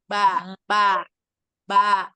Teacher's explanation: Bibir ini ada ba. Ba ini kedua bibir itu bertemu saling menekan.